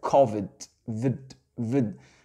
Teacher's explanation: Et à votre avis, le D de COVID, excusez-moi ici, une petite parenthèse, vous voyez bien que le I de Covid, il ne se prononce pas comme un I français. Ça va être le fameux schwa sound.